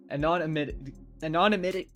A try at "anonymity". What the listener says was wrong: You're adding too many syllables. Break it in half. Anonymity.